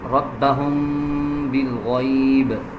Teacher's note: اس میں دیکھیں میم کے اوپر جزم آ رہا ہے، اس کے بعد با آ رہا ہے. اب ہم میم کے اوپر غنہ کریں گے،